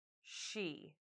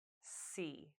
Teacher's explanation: Your lips are in different positions too. With sh, they push forward, but they don't with s.